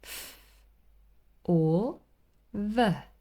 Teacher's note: teeth it's quite specifically the lower lip and the upper teeth so the sound is produced with the bottom lip against the upper teeth